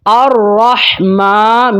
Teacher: الرحمن، ہا کو ٹھنڈی آواز کے ساتھ، اور یہ ہا حلق کے درمیان والے حصے سے ادا ہوتی ہے۔ الرحمن، میم کے اوپر کھڑی زبر ہے، ایک الف تک اس کو لمبا کریں گے